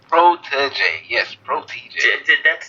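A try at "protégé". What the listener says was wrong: You're saying two D's. There's only one D. There's even a D in that.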